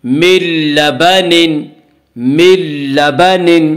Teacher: نون ساکن کے بعد لام ہے، لام آ رہا ہے اس لیے بغیر غنہ کے ملا کر پڑھیں گے، اسے ادغام بلا غنہ ادغام تام کہا جاتا ہے۔